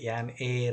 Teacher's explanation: H silent letter ಆಗಿಬಿಟ್ಟು ಏರ್ ಅಂತ ಹೇಳ್ತೀವಿ ನಾವು